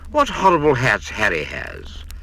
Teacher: It's no hardship to breathe out at the start of those particular words. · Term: H sound